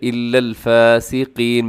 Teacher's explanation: الا الفاسقین میں قاف کو اپنے موٹا پڑھنا ہے